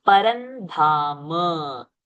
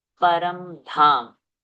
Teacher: Anuswara will become Nakara because Dha is in Ta Varga. Ta, Tha, Da, Dha, Na.